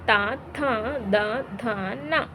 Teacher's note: ಹಲ್ಲುಗಳ ಸಹಾಯದಿಂದ ಹುಟ್ಟುವುದರಿಂದ ದಂತ್ಯಕ್ಷರಗಳೆನ್ನುವರು